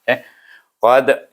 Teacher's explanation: kita baca dengan qalqalah sughra sebab dia mati